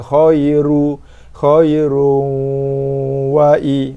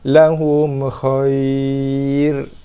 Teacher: ketika wasal ra bagi dua depan, so sifatnya tebal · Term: tafkhim tebal